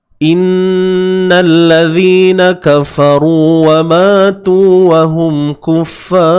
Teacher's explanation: ra di sini kita kena baca dengan tebal. Dengan tebal.